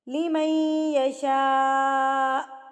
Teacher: اس کو آپ نے 4 حرکات کے برابر کھینچ کے لمبا کر کے پڑھنا ہے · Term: بڑی مد